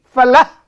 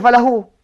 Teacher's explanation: Tapi kalau wakaf anak-anak, tak ada bunyi mad. Hilang langsung semuanya.